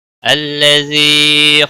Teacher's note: الذی یا مدہ ہے، ایک الف کے برابر کھینچ کر پڑھیں گے